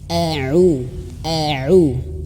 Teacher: nah perhatikan di sini au au ainnya itu harus jelas ya ainnya harus jelas dan tidak boleh masuk hidung nah tidak masuk hidung kalau masuk hidung itu suaranya akan berubahah